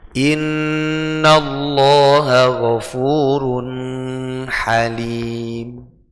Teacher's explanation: mendengungkan suara tanwin ya mendengungkan suara tanwin